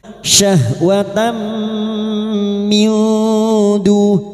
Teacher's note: tak marbutah yang berharokat fathah tanwin bertemu mim idgham bi gunnah masuk dengan mendengung, masuk pada huruf mim dan mendengung selama 3 harokat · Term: idgham bighunah